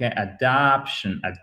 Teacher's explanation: Vous avez un E atténué ici